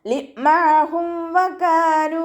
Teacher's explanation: മീം സാക്കിനയ്ക്ക് ശേഷം ബാഉം മീമും അല്ലാത്ത ഏതൊരക്ഷരം വന്നാലും നമ്മൾ മീം സാക്കിനയെ വ്യക്തമാക്കി മണിക്കാതെ ഉച്ചരിക്കുക കേട്ടോ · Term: ഇദ്ഹാർ ഷഫവിയാണ്